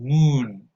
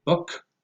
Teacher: The oo is very tense, and it's the sound that we use when we say, for example, moon. But when you say book, it's more relaxed. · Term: lax U